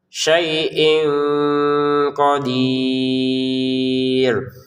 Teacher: Syaiin bertemu qf. Ini tanwinnya kita baca dengan samar.